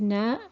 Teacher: is now and again it's similar to the english n so the articulation point is the tip of the tongue with the upper gum